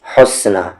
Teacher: ہا کا مخرج بیچ والا حلق